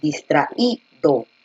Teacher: Porque la fuerza de voz efectivamente se encuentra en la I. Nosotros tenemos aquí la A, la sílaba tra, y aquí es donde se encuentra la mayor fuerza de voz, distraído.